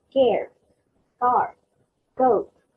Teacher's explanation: K sound aspirated is for words like care, car, goat.